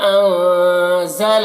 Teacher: انزلنا کے نون میں اخفاء ہو رہا، نون کی آواز کو ناک میں چھپا کر پڑھیں گے